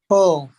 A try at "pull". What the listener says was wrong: Not much rounding of the lips. Pull. Pull. Pull the string. Not much rounding of the lips. Don't do this. Pull. Don't do that. Pull the string and it says a word.